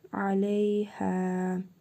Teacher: Hə hərfində isə hərfi məd var. Bir əlif miqdarı uzadırıq.